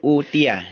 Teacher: Di sini hamzahnya dibaca panjang ya. Hamzahnya berharakat dhamma diikuti oleh wawu sukun, ya. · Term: mad badal